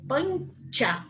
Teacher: naturalmente, a língua já vai se preparando para falar o tchá do C. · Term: palatal